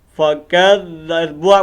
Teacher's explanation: اب اس با کو تھوڑا ہم نے لمبا کرنا ہے چونکہ واو مد ہے. فکذبوا، ہا پیش ہو، اس ہا کو لمبا نہیں کرنا